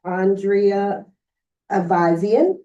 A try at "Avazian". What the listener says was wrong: Well, you used the Armenian pronunciation, which I appreciate. So in Armenia, it's Ivazian. In this country, it's basically Avazian. Exactly.